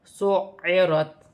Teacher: عین حروف حلقے میں سے بھی ہے، حلق سے بھی ادا ہوگا اور یہاں مشدد بھی ہے.